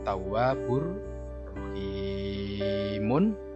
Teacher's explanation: Tawwabun ketemu ro, ro-nya ditandai tasydid. Ini adalah idgham bila hunna, yaitu memasukkan huruf berikutnya tapi dengan tidak mendengung.